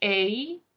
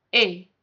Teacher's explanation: So the English sound, your tongue moves, A, but in the French sound, it doesn't, A. Your tongue is going to stay exactly the same.